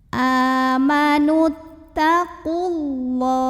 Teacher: Lam jalalah dibaca secara tafkhim. Kenapa? Karena huruf sebelumnya berbaris dhammah. Maka cara bacanya adalah ditebalkan, pangkal lidah diangkat.